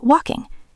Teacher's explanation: Notice the pronunciation of walking. The L is silent. We do not say wall king.